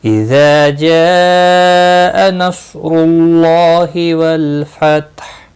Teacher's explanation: صاد مستعلیہ ہے، پر پڑھا جائے گا، را پیش کی وجہ سے پر ہوگا · اذا جاء نصر اللہ والفتح، اذا جاء نصر اللہ، اذا الف مدہ ہے، جاء یہاں پر مد متصل ہے، 4 الف کے برابر کھینچ کر پڑھنا ہے